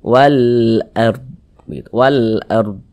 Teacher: kalau ini huruf ro sukun sebelumnya nih Nah tanda baca fathah maka huruf r sukunnya juga dibaca tebal dibaca tabkhim